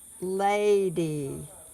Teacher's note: is when the vowel is open in that syllable like lady the a is long because in that syllable it is not cut off by a consonant it is open so the a is open it's also accented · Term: open syllable